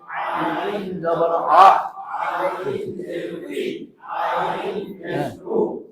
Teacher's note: আইন হলকের মাঝখান থেকে গলায় চিপে আদায় হবে